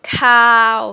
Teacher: that's a mid-tone and that's a long vowel